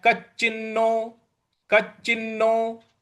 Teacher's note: च है इस पर हमको बल लगाना है कचिनो उसके बाद च के बाद जो न है आधा न है उस पर भी हमको आघात देना है तो ये हो गया कच्च चिन्हो क चिन्हो भय भय विभ्रष्ट